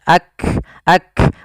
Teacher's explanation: Diawali kaf itu memiliki sifat hams juga sebagaimana ta, dan kaf memiliki sifat yang namanya syiddah juga, adanya penahanan di dalam suaranya. Maka dia kita tahan dulu suaranya baru dialirkan nafasnya.